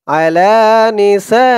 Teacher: চার আলিফ টান মধ্যে মুত্তাসিল